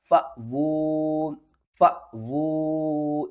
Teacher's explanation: قرآن پاک میں جب بھی الف کے اوپر جزم آ جائے تو ہم الف کو جھٹکے کے ساتھ پڑھتے ہیں